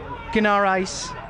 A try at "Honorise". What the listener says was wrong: Honorise. I think the G is silent. That should be an O in there. Honorise.